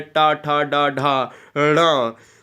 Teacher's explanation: ये मूर्धन्य है, ये मूर्धन्य स्पर्श व्यंजन है